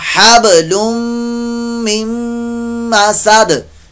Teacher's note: दोनों जगह इदगाम का कायदा लग रहा है। हब बा साकिन में यहां कलकला जरूर कीजिएगा, हबलुम मिन मसद, वक्फ की सूरत में दाल साकिन भी कलकला होगा।